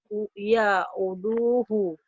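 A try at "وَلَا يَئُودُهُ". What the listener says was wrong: Ya'uduhu. Wala ya'uduhu. Panjang. Wala ya'uduhu. Hu-nya juga panjang nih. Wala ya'uduhu. Awal dihentikan wala ya'uduh sebetulnya ya. Kalau menurut tajwidnya kan.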